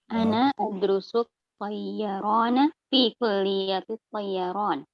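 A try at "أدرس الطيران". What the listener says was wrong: Ana adrusu tayyaran. Laisa hunaka syiddah atau tasdid.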